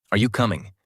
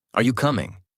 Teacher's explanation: Voice rises at the end.